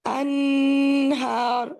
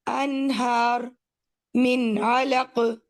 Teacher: لیکن آپ اسے ایسے نہیں پڑھیں گے انہار، نو، انہار من علق، ٹھیک، من ان نون کا مخرج واضح ہوگا، اور آپ اس کے گنہ کو ایگزیجریٹ نہیں کریں گے. ایگزیجریٹ سے مطلب ہے کہ اس کے ساتھ زیادتی نہیں کریں گے کہ آپ ناک میں سے آواز جاری رہنے دیں، ٹھیک، وہ تو ناک سے تو ادا ہوگی کیونکہ نون تو پورا ہی نہیں ہوتا اس کے بغیر. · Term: اظہار